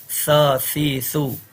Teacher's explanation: اس کو سا نہیں پڑھنا، اس میں سیٹی کی آواز نہیں ہے